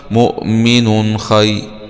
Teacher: نون ضمتين مع الإظهار لأنه جاء بعد حرف خاء والخاء من حروف الإظهار الحلقي مؤمن خي ياء سكون حرف لين